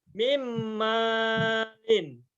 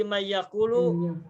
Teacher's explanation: karena idgham maka bunyi nunnya dimasukkan ke bunyi setelahnya. Mim. Sehingga min malin maka bacanya menjadi Mim malin. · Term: idgham biguna